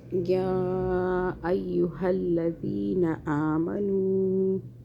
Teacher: یا جو ہے مشدد، اس یہاں پہ دو آوازیں بنانی ہیں، طاقت سے پڑھیں۔ یا کو کھینچیں، چھوٹی مدہ آ رہی ہے۔